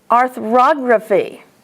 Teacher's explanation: And ography. The accent is on og.